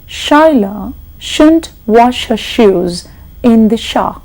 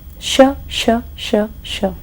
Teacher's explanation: it's the blade of the tongue, not the tip of the tongue, and it's going to go to the hard palate, that is behind the alveolar ridge or the teeth ridge.